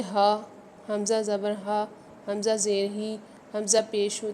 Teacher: ہا کی جو ادائیگی ہے وہ بھی اقصائے حلق سے ہی ہے، یعنی حلق کے نچلے والے حصے سے جو ہے ہا بھی ادا ہوتا ہے۔ جب آپ ہا کو پڑھتے ہیں نا، تو وہ ہا کو پڑھتے وقت کیا ہوتا ہے کہ آپ کو جو یعنی حلق کا جو نچلا والا سائڈ ہے یہ پورا کا پورا وائبریٹ ہونے لگتا ہے، اس کے اندر ایک وائبریشن پیدا ہوتی ہے جب آپ ہا کو پڑھتے ہیں۔